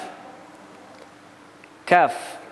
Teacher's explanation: Kemudian masih ke pangkal lidah, makhraj yang kedua, pangkal lidah sedikit ke depan, yakni huruf kaf